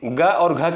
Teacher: ग और घ किससे उच्चारित होता है, ये आपका कंठ से उच्चारित होने वाला वर्ड है।